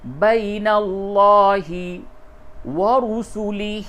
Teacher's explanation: لفظ اللہ کا لام، اس سے قبل زبر ہے، اس کو پڑ کر کے پڑھیں گے، یعنی اس کی آواز منہ بھر کے نکلے گی